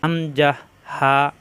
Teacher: কণ্ঠনালী শুরু হইতে হামজাহা শক্ত করে উচ্চারণ করতে হয় হামজাহ হা এক নাম্বার মাখরাজ অর্থাৎ গলার প্রথম অংশ হামজাহ হা